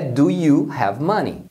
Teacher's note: quando eles estão falando rápido então eles pronunciam o do you como eles juntam numa única palavra